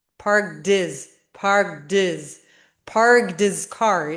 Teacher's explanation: So it just sounds like parked his car, parked his car, parked his car. So you don't hear the H sound. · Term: drop the H